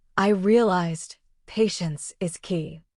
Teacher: The tiny pause after I realized makes your English sound thoughtful and natural. Native speakers do this without even thinking. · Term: pauses and emphasis